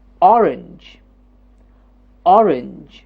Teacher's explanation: The first syllable is jumping up to say or. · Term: stressed syllable